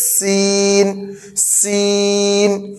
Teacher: اس میں باریک سیٹی نکالیں گے، اس میں زبان کی نوک ثنایا علیہ ثنایا سفلی دونوں کے کنارے پہ لگے گی، اس کو کہیں گے سین سین۔